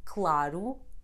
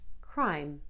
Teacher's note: C always sounds like [k] when is followed by another consonant with which forms a consonant cluster